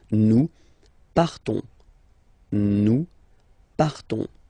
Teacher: classic ending O-N-S, you don't pronounce the S, you just have this on sound nasal